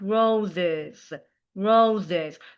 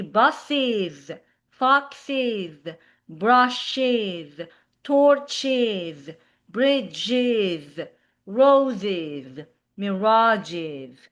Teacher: When you have s at the end, so you make it like roses, roses. So, you will make an extra syllable saying is is is.